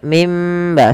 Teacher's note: suara nunnya diganti suara mim maka mim ba sambil ditahan dua harakat mim baik di dalam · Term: iqlab